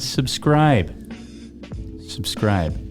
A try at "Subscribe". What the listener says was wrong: We need to practice that. You need to go a little slower. Subscribe. Subscribe.